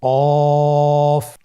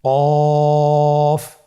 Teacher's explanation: কফ আরেকবার চেষ্টা করুন কফ কফ উচ্চারণের ক্ষেত্রে অবশ্যই তিন আলিফ টেনে পড়তে হবে আবার বলুন কফ কফের মাখরাজ স্ক্রিনে লক্ষ্য করুন এখানে আমরা মাখরাজের বা উচ্চারণের স্থান দেখতে পাচ্ছি কফের মাখরাজ হলো জিহ্বার গোড়া তার বরাবর উপরে তালুর সঙ্গে লাগিয়ে উচ্চারিত হয়